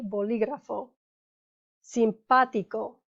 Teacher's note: the emphasis is on the third to last syllable